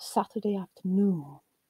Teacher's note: When grouped together, you would have Saturday afternoon, where you have af as previously stressed syllable, now lost its stress completely. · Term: stress loss